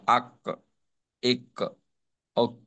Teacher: কলকলার উচ্চারণটা অনেকটা প্রতিধ্বনির মত হবে মানে উচ্চারণটা শেষ হয়ে যাবে না আবার একটু শোনা যাবে